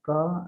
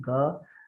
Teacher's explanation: Again, velar, that is back of our mouth, velar, right? Ka sound and ga sounds, they are produced from that part, ka and ga, and ka is voiceless and ga is voiced.